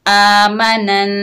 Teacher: नून को नून के साथ मिलाकर गुन्ना के साथ पढ़ेंगे, एक अलिफ की मिकदार गुन्ना होगा